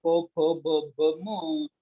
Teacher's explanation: म्हणजे ओठ एकमेकाला चिकटवल्याशिवाय ही म्हणताच येत नाहीत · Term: ओष्ठ व्यंजन